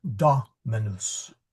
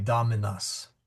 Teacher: Dominus, since all the vowels are short, the accent still goes on to the third one there from the end.